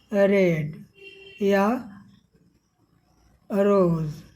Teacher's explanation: र इसमें कोई फड़फड़ाहट नहीं होगी जीभ में